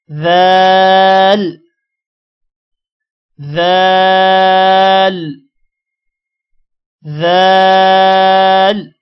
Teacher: ذال ادا کرتے ہوئے آپ نے اپنی زبان کو اوپر والے دانتوں اور نیچے والے دانتوں کے درمیان میں رکھنا ہے